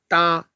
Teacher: यानी कि जो कठोर तालु है हमारा, उसके मध्य का भाग मूर्धा कहलाता है। जब जीवा की उल्टी हुई नोक का निचला भाग मूर्धा से स्पर्श करता है, ऐसी स्थिति में उत्पन्न ध्वनि को मूर्धन्य टा।